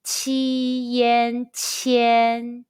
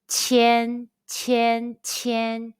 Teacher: Let's combine the initial qi, the final yan, and the high-pitched first tone all together.